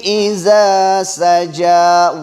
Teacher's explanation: سجا میں کچھ لوگ پڑھتے ہیں سجا یعنی جیم پر وہ مشدد دیتے تشدید دیتے حالانکہ جیم پر تشدید نہیں ہے